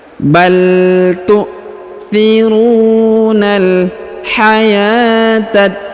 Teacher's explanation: huruf ya dipanjangkan 2 harokat karena di atasnya terdapat tanda alif kecil